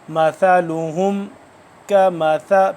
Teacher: سا کو ادا ایسے کریں گے کہ دونوں دانتوں کے درمیان زبان کی نوک کو تھوڑا سا باہر کی جانب نکال کے تو سا ادا ہوگی جیسے کہ ذال ہوتا ہے، لیکن ذال اور سا کی آواز میں ڈیفرنس ہے، باقی ادا کرنے کا طریقہ سیم ہے۔